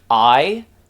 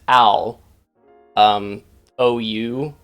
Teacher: Diphthong meaning two vowel sounds combined. Like I, even though we think of that as a long vowel sound, that is two vowel sounds, ah and e. Similarly with ow, ou.